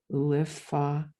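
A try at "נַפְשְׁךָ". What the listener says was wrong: No, so it starts with a nun there. So you've got uvchal, and then it starts with a nun. So you're adding a lamed. The lamed is the of the word before.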